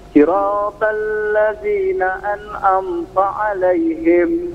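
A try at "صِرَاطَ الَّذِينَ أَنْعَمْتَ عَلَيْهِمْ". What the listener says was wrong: Po-nya tebalkan.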